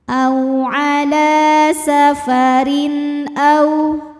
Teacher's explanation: Karena ada tanwin kasroh menghadapi huruf halqi atau huruf tenggorokan, yaitu hamzah. Maka tanwin dibunyikan dengan jelas. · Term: idzhar halqi